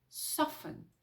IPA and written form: ˈsɔːfn (soften)